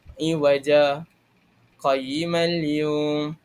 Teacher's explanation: memberhentikan pada a perkataan yang terdapat saktah itu sebanyak dua harakat dan kemudian menyambung dengan nafas yang sama